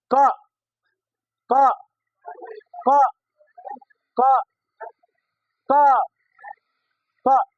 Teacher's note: तो आप सभी विद्यार्थी देखेंगे मेरे तरफ, तो पता चलेगा कि क बोलने में मेरे चेहरे में कहाँ पे कंपन हो रही है। आप देखेंगे क क क क क क कंठ में पता चल रहा था। तो कंठ से उच्चारण है